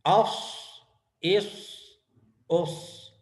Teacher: صاد یہ جو ہے پر ہے اور اس کے اندر سیٹی کی آواز ہے، اور یہ بھی سخت سے پڑھا جاتا ہے